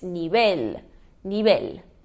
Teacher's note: Então, se fosse uma paroxítona, teria o acento no I, nível. Mas não, a sílaba tônica está na última. Então, ela é uma oxítona, uma aguda